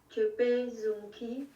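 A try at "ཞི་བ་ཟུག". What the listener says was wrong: Ah, attention, c'est pas zoom, c'est plutôt souk.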